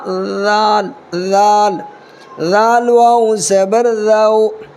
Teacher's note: دیکھو ذال ہے نا، ذال کو نکالنا ہے، یعنی اپنی زبان کا جو نوک ہے، زبان کی نوک کو جو ہے ہلکا سا اوپر کے دانت کے نیچے، یعنی دونوں اوپر نیچے دانت کے بیچ میں ہلکا سا زبان کو رکھنا ہے